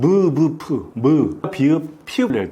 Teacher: 입술을 움직이지 않으면 안 됩니다. 즉 입술의 소리가 납니다. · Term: 입술 소리